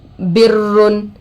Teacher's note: रोए मुशद्ददा पर दो पेश आकर है रा को पुर करके पढ़ेंगे।